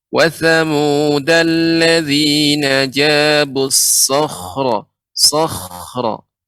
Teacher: Ya, untuk kha juga Ibu kurang tebal karena kha huruf isti'la ya. Huruf kha huruf isti'la. Ketika dia sukun tetap dalam keadaan tebalnya.